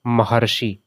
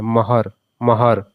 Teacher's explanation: जब आप महर्षि बोल रहे हैं तो बीच में क्या सुनाई दे रहा है महर महर अर का उच्चारण हो रहा है